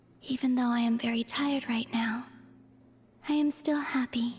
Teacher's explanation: she does kind of have that sort of breathy, ethereal kind of tone in her voice, no matter what she's saying or how she's talking, so...